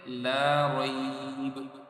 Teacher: لا رے نہیں پڑھنا اس کو، لا ری پڑھنا ہے کیونکہ حروف لین ہے